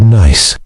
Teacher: You can clearly hear and feel that final S sound. That little puff of air. That's a voiceless sound.